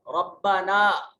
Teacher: ربنا میں یہ چھوٹی مد ہے، اس کو 2 سے 3 الف کے برابر لمبا کریں گے